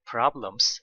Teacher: the pitch goes higher here problems at the end of problems